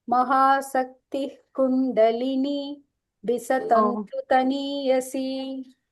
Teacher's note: So after Visarga, if there is a ka, it becomes a H here, okay, like a half ha.